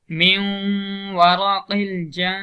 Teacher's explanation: اب من ورق نون ساکن ہے، اس کے بعد حروف یرملون میں سے واو آ رہا ہے تو ہم ادغام کریں گے. ایک الف کی مقدار ہم آواز کو ناک کے اندر لے جائیں گے